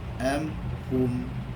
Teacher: Izhar syafawi ini maksudnya adalah jelas. Bermaksud jelas tanpa dengung.